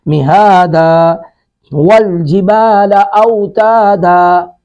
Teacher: وقف کی وجہ سے یہ ہم دن کی بجائے دا پڑھ رہے ہیں